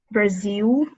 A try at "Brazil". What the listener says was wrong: So you kind of make a U with your mouth, but you don't want to do that. So you want to think of the L sound.